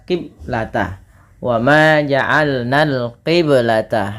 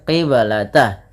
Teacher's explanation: ada bacaan qalqalah maka suara bnya harus dipantulkan. Kesalahan yang terjadi di dalam membaca bacaan qalqalah yaitu tidak memantulkan bunyi suara bnya.